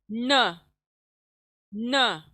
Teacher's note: फिर next letter लिखते हैं नून के पर जबर लगने से न। जबान की नोक सामने के दांतों के मसूड़ों पे लगेंगी, तब जाकर नून अदा होगा न, सख्ती के साथ न।